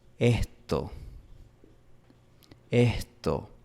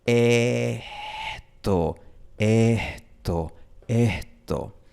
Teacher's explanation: La S es aspirada aquí en la costa. La aspiración es básicamente una vocal susurrada por unos milisegundos. Tú empiezas con una después susurras la E por un momento y continúas con el resto de la palabra.